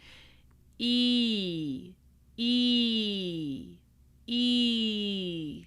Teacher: this sound ee in English, it travels a little bit. It glides a little bit. It's not super pure. Listen. ee ee ee Okay, your tongue actually shifts ever so slightly. · Okay, your tongue actually shifts ever so slightly. E, E, E. And it gets closer to the roof of your mouth as you travel through the sound.